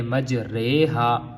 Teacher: امالہ کی را کو اردو کے لفظ قطرے کی را کی طرح پڑھیں گے، یعنی ری نہیں پڑھیں گے۔ میں پہلے بھی بتا چکا ہوں کہ ہم ری نہیں پڑھیں گے بلکہ رے پڑھیں گے، مجریہا۔